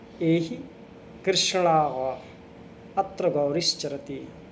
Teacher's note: जब किसी व्यक्ति को दूर से पुकारते हैं तब संबोधन पद के अंतिम वर्ण को 3 मात्रा का समय लगाकर बोलते हैं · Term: प्लुत स्वर